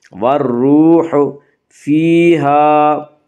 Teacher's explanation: یا مدہ کو 1 الف کے برابر کھینچ کر پڑھیں گے